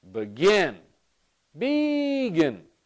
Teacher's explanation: this is the stress pattern for begin. The second syllable is stressed. And when the second syllable is stressed, what we're saying is this second syllable is the more important syllable.